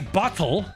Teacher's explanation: So the glottal stop is one allophone of the T sound.